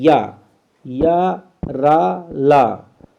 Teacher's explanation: या का तालु है, रा का मूर्धा है और फिर ला का दंत है। एक सीरियल में ही ऊपर से नीचे की ओर बढ़ते जाते हैं।